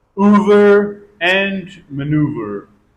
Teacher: EOU is pronounced long back vowel and lips rounded oo sound.